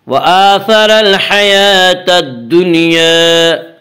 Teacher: الدنیا الف مدہ، الف ہمیشہ مدہ ہوتا ہے، الف سے پہلے زبر ہوتا ہے. الف مدہ کو ایک الف کے برابر کھینچ کر پڑھیں گے.